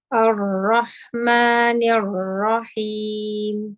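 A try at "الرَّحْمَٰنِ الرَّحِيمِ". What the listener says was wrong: Yes, you're starting to slide a little bit back. Just remember to keep the tongue forward, inshallah.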